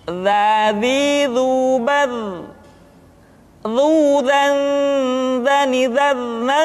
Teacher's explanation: huruf dha diucapkan dengan menyentuhkan ujung lidah dengan dinding dua gigi seri bagian atas seperti kita mengucapkan huruf tha.